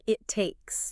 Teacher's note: Notice how the stopped T at the end of it links really smoothly into the T at the start of takes. Ah, yeah. It's not it takes, it's more like it takes.